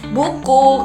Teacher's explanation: U kecil ini terletak di tinggi atas belakang dengan posisi mulut itu tertutup.